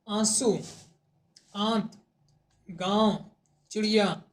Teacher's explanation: नाक से सांस बहुत कम निकलती है और मुख से अधिक · अनुनासिक के उच्चारण में नाक से बहुत कम सांस निकलती है